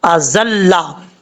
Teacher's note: زا سیٹی کے ساتھ پڑھا جائے گا، بغیر سیٹی کے نہیں پڑھنا